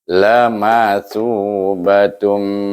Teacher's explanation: thu panjang sedikit, menunjukkan dia adalah mad asli. Sebab sebelum waw itu baris hadapan.